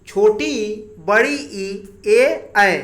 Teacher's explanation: अग्र स्वर में जीभ का आगे का भाग काम करता है